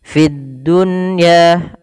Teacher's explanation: Fid dunya ada di sini alif lam, kita namakan dengan alif lam syamsiyah, yaitu alif lam yang tertulis tapi tidak dibaca lamnya, langsung ke huruf dal dan dia ditasydidkan